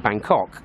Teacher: Whereas as Limeys, as Brits, we pronounce it Bangkok. We have the emphasis on the 2nd syllable.